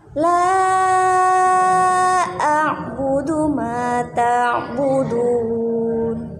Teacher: Maka hukum bacaannya adalah mad jaiz munfasil. Nah, mad jaiz munfasil itu wajib dibaca dengan panjang 5 harokat